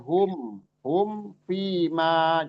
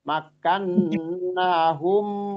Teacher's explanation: enggak tahan seperti itu di humnya karena di situ berlaku hukum izhar safawi